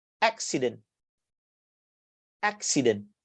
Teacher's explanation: So you stress on the first